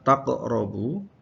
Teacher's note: ini ada qalqalah kubra, huruf qaf yang disukun